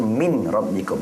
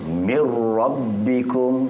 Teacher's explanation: baca Min rabbikum dia terus Mir rabbikum semua Min rabbikum namanya idgham Bila Ghunnah memasukkan tanpa dengung · nun ni dah tak bunyi, jangan baca min rabbikum. Dia terus mir rabbikum semua. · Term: idgham bila gunnah